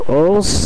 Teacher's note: এর উচ্চারণটি হবে ওন্স, যেটি নাক থেকে আসতে হবে